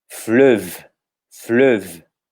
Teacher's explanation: Lembrando que o ES no final é mudo, então a pronúncia vai até o V.